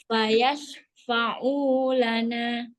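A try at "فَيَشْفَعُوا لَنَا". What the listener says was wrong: shinnya nggak usah buru-buru. Fayashfa'u lana.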